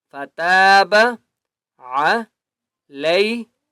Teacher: تا کو ایک الف کی مقدار کھینچ کر پڑھیں گے،